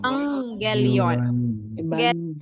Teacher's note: If we have a gamma gamma, the first gamma becomes new, pronounced as n.